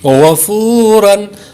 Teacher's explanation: غین زبر غ، فا واو پیش فو، غفو، را دو زبر رن، غفورن. غین پہ حروف مستعلیہ ہے اور فا واو پیش فو پہ واو مدہ ہے اس لیے اس کو لمبا کریں گے اور غین کو پر کریں گے